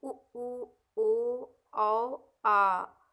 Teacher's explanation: पश्च स्वर जो होता है वो उ ओ औ आ, ये आपका पश्च स्वर है, जो जो मुख मतलब मुख के पिछले हिस्से से बोला जाता है, पिछले भाग से, पीछे के भाग से, उसे ही पश्च स्वर कहते हैं